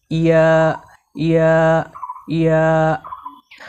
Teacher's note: ইয়া হরফকে জিহ্বার মাঝখান থেকে নরম করে পড়তে হয়